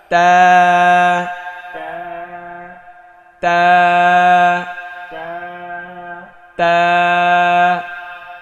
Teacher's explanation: এটা মাখরাজ হচ্ছে জিব্বার আগা সামনের ওপরের দুই দাঁতের গোড়ায় লাগিয়ে,